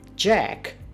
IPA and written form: dʒæk (Jack)